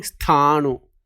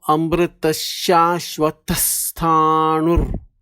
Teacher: So visarga is there, so double S sound plus th.